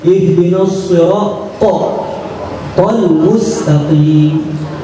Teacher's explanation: Di antara ayat Al-Fatihah di dalam lafal ihdinas sirat, fokus ke huruf ta, melafadzkannya tafkhim